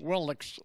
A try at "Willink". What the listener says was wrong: Willink. Like I-N, you keep saying ick, and it's ink. It's Willink.